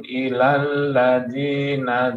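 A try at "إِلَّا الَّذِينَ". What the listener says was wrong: Illal ladzina. Ada tasydid. Illal ladzina.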